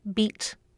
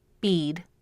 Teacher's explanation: The vowel sound in both words is the high front tense vowel E, but in bead, the vowel is a little longer. This is a predictable process in English.